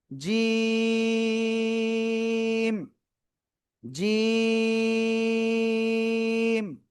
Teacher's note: জিহ্বার মধ্যখান, তার বরাবর উপরে তালুর সাথে লাগিয়ে এই অক্ষরটা উচ্চারণ করতে হয়।